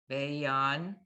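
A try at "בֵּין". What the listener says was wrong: Bane. Not bayan. When you have a yud without a vowel after it, under it, and there's a vowel right before it, it just extends the vowel.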